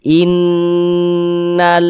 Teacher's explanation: Digunahkan tuh didengungkan. Jadi suaranya itu kita tahan, kita panjangkan sejenak. In di bagian inn-nya itu kita tahan, kita panjangkan sejenak. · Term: ghunah musyaddadah